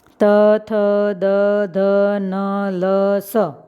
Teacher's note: आप ये सभी व्यंजनों का प्रोनाउंसिएशन करते हैं तो आपकी जीभ दांत को टच करती है, इसीलिए उसको दंत्य व्यंजन भी कहा जाता है